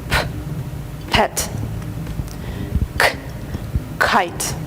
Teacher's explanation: Примечательны также звуки п и к. Они произносятся с придыханием. Представьте, что перед вами горит свеча, которую вы хотите задуть, и одновременно с этим вы произносите эти звуки.